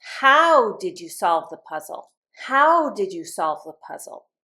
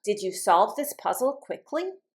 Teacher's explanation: asking for some information, and my voice is not going to go up.